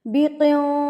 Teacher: نون ساکن کی آواز کو آپ نے ناک میں چھپا لینا ہے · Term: اخفا